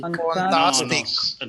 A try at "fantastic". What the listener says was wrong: Second, somebody said me fantastic. No, it should be rounded. F-O. It should be fantastic. Make sure about only one syllable over here. That is O, making an O sound here.